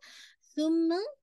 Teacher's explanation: آپ کی tip of the ٹنگ آپ کے سامنے کے دانتوں کے ایجز کے ساتھ لگے گی